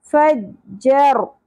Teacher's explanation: رو تھرتھراہٹ کے ساتھ اور پر بھی ہوگا. فجر نا الف حرف مدہ ایک الف کے برابر کھینچنا ہے.